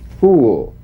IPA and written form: fuːl (fool)